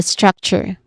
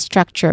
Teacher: with emphasis on the first syllable